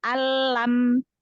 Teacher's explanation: Berarti mim sukunnya dibaca jelas, tanpa gunnah, tanpa dengung. · Karena huruf mim adalah huruf asyafatain. Huruf dua bibir. Ya, yang makhrajnya dari dua bibir. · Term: Idhar syafawi